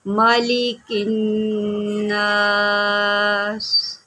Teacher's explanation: اب یہاں پر نون شدید ہے تو یہاں پر غنہ کریں گے